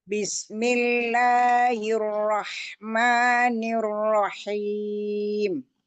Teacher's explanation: huruf H yang temennya ain, yang satu makhraj dengan ainnya.